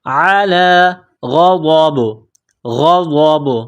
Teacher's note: غین اور ضاد کو موٹا کرنا ہے. جب یہاں پر وقف کریں گے تو با کو سائلنٹ کریں گے اور با پر قلقلہ کریں گے